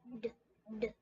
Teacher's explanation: Vibrate. Has our voice on, so our vocal folds are vibrating. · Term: D sound